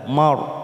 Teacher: ra sukun didahului fathah kita baca tebal. Mar ujung lidah kita terangkat.